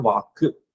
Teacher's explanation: வாக் அப்படின்றது வாக்கு அப்படின்னு நம்ம ஒரு குற்றியல் உகரம் சேர்த்து சொல்றோம்